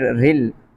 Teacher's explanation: را کے نیچے زیر ہو تو را بریک ہوتا ہے. اب اس را کو موٹا نہیں کیا جائے گا، اس را کو بریک پڑھیں گے.